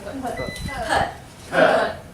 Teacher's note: So I would say put without the T sound. I can't hear the T. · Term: catch T's